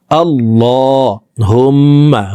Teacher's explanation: মোটা করে উপরের দিকে ধাবিত করে এক আলিফ টেনে পড়ব